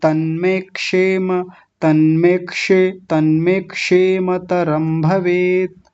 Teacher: उच्चारण अकेला नहीं होता तन्मे तन्मे तन्मे क होता है ना इसमें क आधा क होता है और साथ में मूर्धन शकार होता है